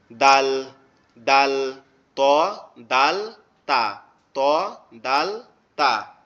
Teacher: আমাদের জিহ্বার আগা সামনের উপরের দুই দাঁতের আগার সঙ্গে লাগবে